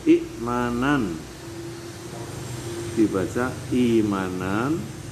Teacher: kalau i'manan dibaca imanan yaitu huruf hamzah diganti dengan huruf mad ya, di mana ya ini adalah sesuai dengan harokat huruf sebelumnya yaitu kasroh. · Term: ibdal